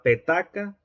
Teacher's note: la C de Petaca remite a la oclusiva velar sorda